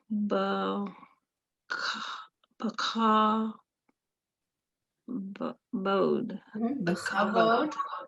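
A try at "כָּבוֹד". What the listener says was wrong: The chavod, perfect.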